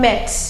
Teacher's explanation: E is a monophone. It is a pure sound. It is also a short sound. A monophone means it has one syllable and one sound.